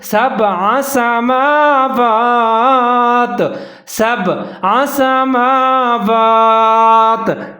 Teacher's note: سنیے، فسواہن آگے ہے سبع سماوات، سین کے اوپر زبر ہے، با کے اوپر ساکن ہے جہاں قلقلہ کرنا ہے